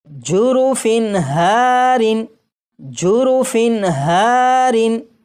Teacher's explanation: ہا حروف حلقی میں سے ہے، اس لیے یہ جو تنوین ہے اس کے نون ساکن کو ظاہر کر کے پڑھیں گے